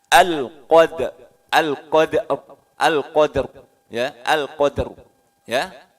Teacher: Ro-nya tebal, rahang bawah maju sedikit